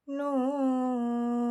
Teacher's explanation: Nah, di sini terdapat huruf nun yang terletak di awal surat. Maka cara membacanya sepanjang enam harakat.